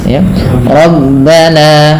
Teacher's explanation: Untuk mad thabi'i sendiri cukup dua harakat saja. ya rabbana dengan menga ya dengan meninggikan suara sedikit dengan memanjangkan hurufnya.